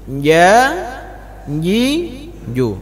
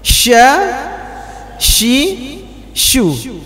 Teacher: Huruf jim tidak berangin, Pak. Tapi huruf shin ini kuat sekali anginnya.